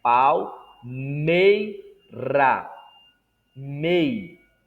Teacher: nós temos a vogal e mais a semivogal e ao meio perceba que a ênfase não é no i mas no e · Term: ditongo decrescente